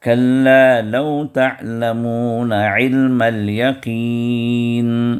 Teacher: عین جو وسط حلق سے ادا کرنا ہے